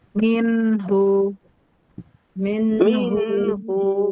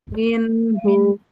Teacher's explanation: Jadi nanti jangan ada yang baca min hu, jangan gitu. Minhu, minhu dari nun sukun tawasud ke ha harus nyambung.